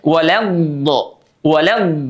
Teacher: kalau huruf d itu dia dijeda suaranya atau bahkan memantul tapi kalau huruf dad dia mengalir suaranya